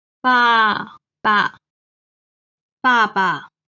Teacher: 爸 is the fourth tone. The second character, 爸 is the neutral tone.